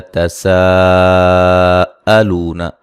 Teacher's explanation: ذی مدہ ہے، تساءلون، سین کو باریک سیٹی سے ادا کریں گے، الف مدہ کے بعد حمزہ اسی کلمہ میں ہے، مد واجب ہے، 3 سے 4 الف کے برابر مد کریں گے